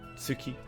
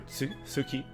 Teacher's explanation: Difference between Suki and Tsuki. Tsu has kind of like somewhat of a T sound in there. And then su is a bit different.